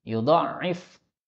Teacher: maka ainnya ditasydid tapi dhatnya pendek